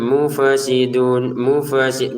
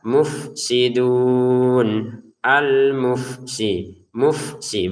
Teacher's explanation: Huruf fa-nya ini jangan kita pantulkan ya. Jangan mufasidun, mufasid, gak ada e-nya di sini.